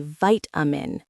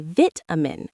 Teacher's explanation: Americans say vitamin with a long I sound. British people say vitamin, short I.